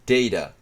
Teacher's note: the schwa at the end of a word, like the /ə/ at the end of data, can be considered the same as a caret.